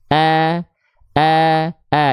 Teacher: tipis itu kita analogikan sambil senyum biar lebih natural pelafalannya maka ketika kita lafalkan bukan o tapi a biasanya dengan kita analogikan sambil sedikit seolah tersenyum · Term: huruf tipis